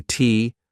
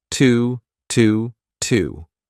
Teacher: a very unstressed T but connect it to your next sound